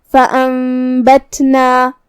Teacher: اقلاب کا معنی ہے بدل دینا، تو ہم یہاں نون ساکن کو میم میں بدل کے غنہ کے ساتھ یہ حکم کو ادا کریں گے۔ فانبتنا، یہاں تا ساکن ہے تو ہمیں تا کو ہم سے ادا کرنا ہے۔